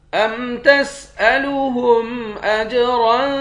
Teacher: را دو زبر رن پہ اخفا کریں گے، را کو موٹا بھی